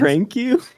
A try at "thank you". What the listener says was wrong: It sounded like you said prank you instead